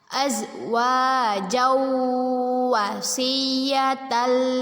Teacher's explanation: Kita baca dengan memasukkan bacaan tanwin ke huruf waw dan berdengung 2 harokat. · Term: idgham bi gunnah